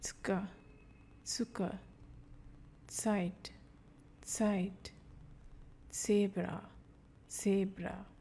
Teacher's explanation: Die Aussprache von Z, which gives a TS sound.